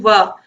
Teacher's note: तो हमारे निचले होंठ ऊपरी दांतों को स्पर्श करते हैं · जब आप वाह बोलोगे तो आप देखोगे कि वाह बोलने पर जो आपके निचले होंठ है वो ऊपरी दांतों को स्पर्श कर रहे हैं। तो वह जो है यह इसका उच्चारण स्थान दंतोष्ठ होता है।